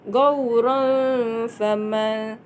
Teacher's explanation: Hukum di sini ikhfa hakiki kerana huruf ra berbaris tanwin fathah bertemu huruf fa dan cara membacanya dengan dengung 2 harakat